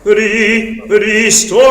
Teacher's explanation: Use the flipped R. It's almost like a little schwa before the R